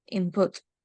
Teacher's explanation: the N change to M before P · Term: regressive assimilation